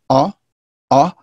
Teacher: schwa similar but the difference is that this is a different it's a more backward sound it is pronounced with the with the moving of the tongue toward the back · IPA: ʌ